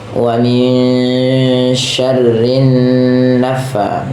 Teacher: nah ini tahan ya, rinnya tahan karena ada bacaan gunah lagi. Nah, ini hati-hati jangan dibaca dengan sa ya.